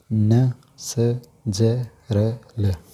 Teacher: वर्तस या मसूड़े का योग रहता है इनके उच्चारण में। ये हैं जी न, स, ज, र, ल। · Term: वर्तस्य व्यंजन